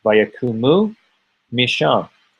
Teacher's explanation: And since it's what dropped out, the vowel that remains is still an u sound. It's just the shorter u sound.